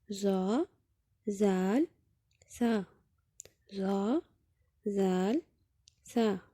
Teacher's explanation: زبان کی نوک جب ثنایا علیہ یعنی سامنے والے اوپر کے دو دانتوں کی نوک سے لگے تو یہاں سے زا، زال، سا ادا ہوتے ہیں